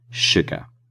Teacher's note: in sugar, the S is actually making a shh sound